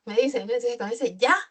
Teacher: me dicen ya, con ese tono alto, significa alegría, aceptación